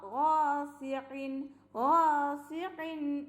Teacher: ഗൈനാണ് ട്ടോ, ഐനല്ല. തൊണ്ടയുടെ ഏറ്റവും ആദ്യ ഭാഗത്തു നിന്നാണ് ഗൈന് വരുന്നത്, അതിനെ ശ്രദ്ധിക്കുക.